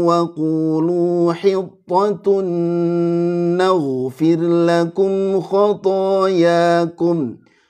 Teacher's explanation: Ghainnya tebal, angkat rahangnya dan mengalir